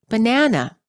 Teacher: banana is pronounced as banana all three syllables are stressed equally in English we pronounce the word as banana the second syllable is stressed the vowel within the stressed syllable is longer louder and higher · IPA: /bə ʹnænə/